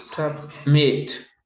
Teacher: La fuerza de voz al final, en met.